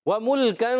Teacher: व मुल्कन, काफ का मखरज है, ज़ुबान की जड़ तालु का सख्त हिस्सा, ज़ुबान की जड़ और तालु का सख्त हिस्सा, ये काफ का मखरज है